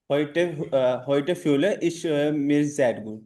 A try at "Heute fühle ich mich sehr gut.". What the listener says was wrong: अब इश मिश ऐसे नहीं बोलना है, heute fühle ich mich sehr gut। आप बोल नहीं पा रहे हो, बस आप पढ़ रहे हो बस, है ना, बच्चे की तरह।